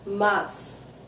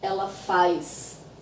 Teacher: But in many places, we say mais. So there's an I that actually doesn't exist in the word, and that happens when we say words that end in AS or AZ